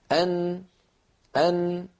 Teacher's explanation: فالصورة التي على اليمين تبين لنا كيف أن اللسان يقرع مخرج النون، وأن هذا القرع لطرف اللسان يصاحبه غنة من الخيشوم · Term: الغنة